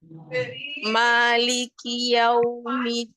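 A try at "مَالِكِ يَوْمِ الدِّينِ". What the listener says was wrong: Jangan yau. Di situ wow sukun. Kalau waw sukun itu berarti dia ada di makhraj waw. Maliki yau, sampai kita betul-betul ada di makhraj waw. Yau, nyongkan kedua bibir. Maliki yaumiddin.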